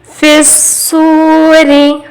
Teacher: فی الصوری، فا کو سوا سے ملا ہے، پا سوا زیر فس، پھر سو حرف مد ہے، تھوڑا سا کھینچیں گے، بیچ میں یہاں پہ الف لام کو نہیں پڑھ رہے، یہ حرف شمسی ہے · فی الصوری، یہاں ایک بات کو خیال میں رکھیں گے، سواد پر تجدید ہے، سواد کو ہم 2 بار پڑھیں گے